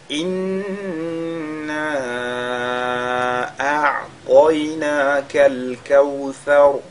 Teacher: Ici, inna, nous avons la lettre nun qui est mushaddada. La lettre nun qui est mushaddada, sur laquelle on fait donc al-ghunna. Et inna, on essaie de prolonger ici parce que on a alif al-mad qui est suivi par un hamza, mais le hamza se retrouve dans un autre mot.